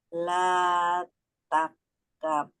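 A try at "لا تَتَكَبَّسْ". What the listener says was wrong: kurang satu taknya. Oke, la takabbas.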